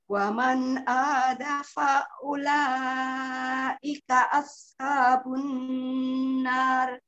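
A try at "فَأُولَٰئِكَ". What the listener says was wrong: Jangan fa'u, jadi fa-nya panjang. Faula langsung aja.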